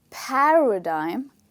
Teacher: the stressed part is the first part of the word which is pa